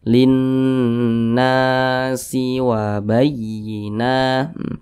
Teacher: memiliki tanda baca fathah posisinya tepat berada di belakang huruf alif Mad thi'i panjangnya dua harakat atau kira-kira dua ketukan